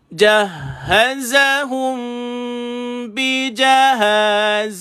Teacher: Tuan-tuan rapat bibir 2 harakat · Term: ikhfa syafawi